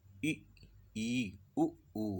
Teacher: इन स्वरों के उच्चारण में मुंह लगभग बंद ही रहता है। अब देखो आप ई उ ऊ, अब देखो मुंह बिल्कुल बंद सा ही है, अंदर से ही, मतलब ऐसे अंदर से अब आ गई है, मुंह खुल नहीं पाया पूरा। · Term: संवृत स्वर